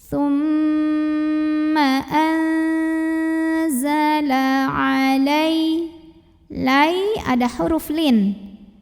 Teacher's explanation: ikhfa karena ada nun sukun yang bertemu dengan huruf Zai maka cara baca Nun sukunnya adalah dibunyikan samar-samar menuju Zai disertai dengungan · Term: ikhfa Hakiki, ikhfa hakiki